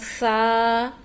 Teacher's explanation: جو اگلے ہمارے دانت ہیں ان کے درمیان میں ہم نے زبان کو لے کر آنا ہے. تھوڑی سی زبان ہماری باہر نکلے گی، اگلے دانتوں کی نوک سے ٹچ کرے گی